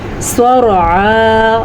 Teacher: را بھی پر پڑھنی ہے اور صاد بھی پر پڑھنی ہے